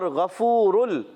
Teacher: غین ادا ہوتا ہے حلق کے اوپر والے حصے سے